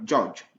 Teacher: c'est une combinaison aussi du son D, le son D ici, et du son J